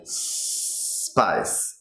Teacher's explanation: So make an S the little longer, then you won't accidentally add an 'e' sound like you would in Spanish.